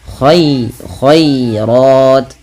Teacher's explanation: Kemudian al khairat, ya lembutkan, dan di sini tipis khairat. Nah, ro-nya baru dibaca dengan tebal karena dia ro tafkhim berharokat fathah